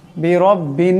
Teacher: বিরব্বিন এই বা এই নুনকে ধরবে, নুনের উপর তসদিদ আছে, নুন মুশাদ্দাদের একারে পরিমাণ গুণনা হবে।